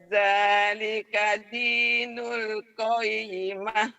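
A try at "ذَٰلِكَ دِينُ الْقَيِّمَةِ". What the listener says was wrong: Bagus.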